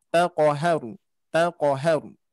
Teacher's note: Nah, huruf qafnya dipantulkan ya, dilatih lagi pantulannya.